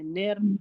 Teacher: तो नून को हमें र से मिलाना है। निर फिर र को हमें मोटा पढ़ना है।